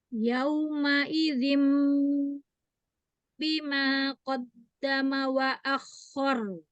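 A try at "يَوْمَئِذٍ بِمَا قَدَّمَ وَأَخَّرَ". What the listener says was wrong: Masih hilang sedikit, jadi dorongan suaranya yang al-jaufnya tambah lagi. Yauma idzim, kuatkan. Tahan, gunahnya setingkat.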